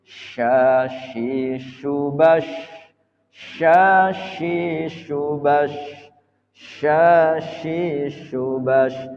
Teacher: Nah, shin ini punya sifat tafashi. Tafashi itu menyebar. Jadi ketika diucapkan, baik waqaf, baik sukun maupun hidup, dia memiliki sifat tafashi salah satunya.